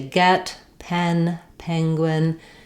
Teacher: the word penguin is stressed on the first syllable. Second syllable gwin is shorter and unstressed.